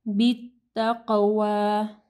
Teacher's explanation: امر رو کو ہیوی پڑھنا ہے. بالتقوی قاف کو ہیوی پڑھنا ہے، قاف کے اوپر جزم ہے، ٹھیک ہے، قلقلہ ہوگا